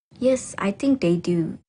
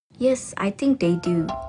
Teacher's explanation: she uses a full Rising tone appropriately to indicate that she doesn't really know or is unsure